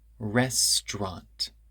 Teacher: restaurant is written restaurant but that syllable in the middle disappears